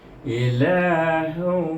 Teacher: Ilahu, iaitu dengan idgham ma'al gunnah 2 harakah, iaitu dengan dengung.